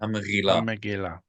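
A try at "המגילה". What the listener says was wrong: This is more like the modern Hebrew R, how they do the resh in modern Hebrew. That should be the gimel with no dot. Gimel refuya. This is gimel refuya. Hamrila, hamrila. If you struggle with it, just pronounce it as a G, as in good.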